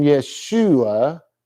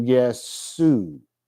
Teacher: they do not have an sh sound in Greek so it goes from yesu